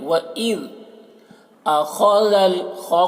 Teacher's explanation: خو کو پر پڑھنا ہے اور ذال کو باریک پڑھنا ہے